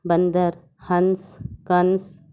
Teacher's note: अंग को अनुस्वार कहते हैं, क्योंकि इसका उच्चारण नाक से होता है। अंग का चिन्ह ऊपर बिंदी होता है, जैसे बंदर, हंस, कंस।